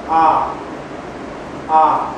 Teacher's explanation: A sambil kita buat a lidah kita dia sampal lidah kita cecahkan pada belakang gigi bawah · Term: vokal A